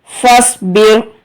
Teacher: صاد حروف مستعلیہ ہے تو یہاں پر آپ کو صاد کو پر پڑھنا ہے